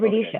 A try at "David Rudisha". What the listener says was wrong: She said it in a very super fast chew way. It didn't sound like Rudisha.